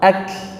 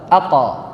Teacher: Kalau kaf ketika dilepaskan keluar udara, kalau qaf dilepaskan keluar suara